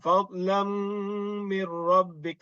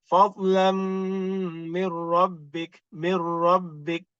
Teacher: So, ra dan lam dia tanpa dengung. Jadi maknanya jangan lama